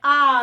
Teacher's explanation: विवृत यानी कि पूरा खुल जाना पूरा मुंह खुलना